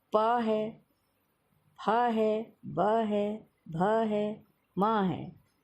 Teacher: ऊ है जिनमें प है, फ है, ब है, भ है, म है। इन सबको बोलते समय आपके होंठ आपस में मिलते हैं। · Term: ओष्ठ वाले व्यंजन